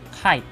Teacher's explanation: it comes out with a puff of air in the word tight